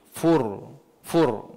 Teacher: ra sebelum dia berbaris atas ataupun berbaris hadapan maka ra itu perlu dibaca dengan tebal. Ra itu di tengah-tengah ataupun di hujung.